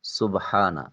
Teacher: سبحانہ سین حرف صفیریہ ہے، ادائیگی کے وقت سیٹی کی آواز آ جائے گی۔ با ساکن ہے، قلقلہ واجب ہوگا۔